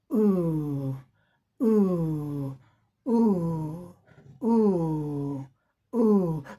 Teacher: Your tongue is, your tongue is long way back in the pronunciation of the sound. यानी ऊ जब हम करते हैं तो ज़्यादा देर समय तक हमारी जीभ जो है पीछे को खिंची रहती है। बैक, पीछे को खिंची रहती है। · तो हमारी जीभ जो है तन करके पीछे की तरफ चली जाती है।